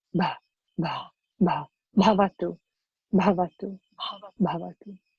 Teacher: the bha is an aspirate letter. It means you have a little bit of puff